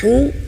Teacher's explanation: Nah, di sini agak lebih ekstrim ya bagi pemula, bagi ibu bapak dilatih huruf H-nya mengeluarkan angin yang banyak